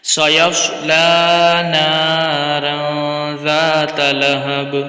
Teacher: सयस्ला स्वाद को मोटा पढ़ना है। और नार यहाँ पर गुन्ना करेंगे, इख्फा का कायदा लग रहा है। ज़ात लहब, ज़ाता अलिफ मद्दे का कायदा है, ज़ा को खींचेंगे, ता को बगैर खींचे पढ़ेंगे और लहब बा में कलकला करेंगे खूब ज़ाहिर करके।